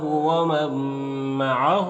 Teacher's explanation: نون ساکن کے بعد میم ہے حروف یومن میں سے تو نون کو میم سے ملا کر غنہ کے ساتھ میں پڑھیں گے، اس کو ادغام ناقص کہتے ہیں.